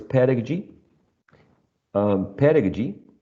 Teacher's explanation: pedagogy has four syllables and the first one is uh the most prominent one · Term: primary stress